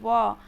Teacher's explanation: व आप लोग बोल के देखिए, व तो क्या होता है? दांत और ओठ में क्या होती है? टच होती है, कॉम्बिनेशन करके हमारा व निकल रहा है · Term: दंतोष्ठ